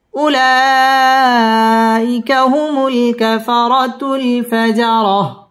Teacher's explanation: উলাই মধ্যে মুত্তাসিল 4 আলিফ টান দিয়ে পড়তে হবে